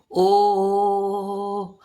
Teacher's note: जैसे ओ, तो गले से भी आवाज आ रही है और होठ भी गोलाई में मुड़ रहा है। और इसके अतिरिक्त औ की मात्रा का उच्चारण भी कंठ होठ से ही होता है, लेकिन इसमें मुख खुला रहता है और स्वर व्यापक होता है। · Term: ओ की मात्रा